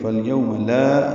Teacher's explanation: فَالْيَوْمَ فا کو لام سے ملائیں گے، یہ بیچ میں الف نہیں پڑھیں گے، حمزہ عارضی ہے الیوم کا، یو وولین ہے، ہونٹوں کو آگے لائیں گے، نہ تمام گول کریں گے. فَالْيَوْمَ لا، یہ لا الف مدہ ہے تو حرکات لمبا کریں گے.